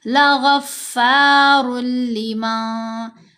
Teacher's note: تو یہاں پر جو نون کی آواز ہے، جب ہم پڑھتے ہیں را 2 پیش رن، رن نون سنائی دیتا ہے، اسی نون کی آواز کو ہم نے مرج کرنا ہے لام کے اندر. نون کی آواز سنائی نہیں دے گی، را اور لام آپس میں مل جائیں گی اور غنہ نہیں ہوگا. 2 حروف ہیں را اور لام، جب ان کے اوپر ہم نے ادغام کرنا ہے تو ان کے اوپر غنہ نہیں کرنا.